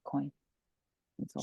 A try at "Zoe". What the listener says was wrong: Zoe. You're saying it just like a regular Z. And then the last vowel is that AWY. Oi. Oi. Zoe. Zoe. Not Zoe, but Zoe. Kind of making that really sound long. There's a difference there. Zoe.